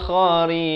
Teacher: Dan rin ini ra-nya jadi nipis.